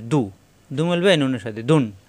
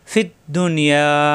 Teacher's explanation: এই নুন সাকিনের পর ইয়া আসছে, দুনিয়া বুনিয়া এরকম শব্দে গুণ্য হয় না, এখানে কোনো গুণ্য হবে না।